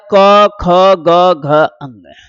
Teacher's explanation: जिनका उच्चारण कंठ से होगा वो है क ख ग घ अंग